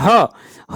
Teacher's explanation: ह वर्ण घोष तथा महाप्राण दोनों है। यह ऊष्म व्यंजन भी है। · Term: घोष महाप्राण